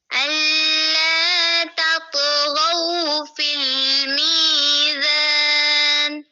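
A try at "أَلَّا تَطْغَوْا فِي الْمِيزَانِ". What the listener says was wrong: फिर अल पे देर कर दिया आपने, दोबारा पढ़ो।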